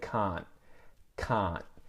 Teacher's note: I'm just touching the roof of my mouth with my tongue and stopping the air. · And so what's happening there is my tongue is actually touching the roof of my mouth, and I'm turning the T into what we call a stop consonant